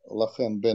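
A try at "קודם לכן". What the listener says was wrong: Кодем лахен, да, я тоже не понял. Кодем лахен, да, до этого. Да, здесь не бен, а это каф. Вот бет, это вот, а это каф. Кодем лахен.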